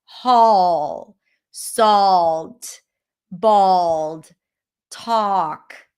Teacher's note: we also have the dark L that makes it a bit more rounded at the end.